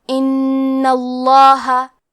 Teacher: لفظ الجلالہ مطلب کلمت اللہ کے لام کا حکم ہے تفخیم، تو ہم حرف اللام کو موٹی آواز میں پڑھیں گے